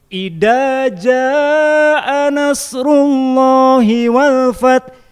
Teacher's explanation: huruf dal yang pakai titik disamakan dengan yang tidak pakai titik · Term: Tertukar makhraj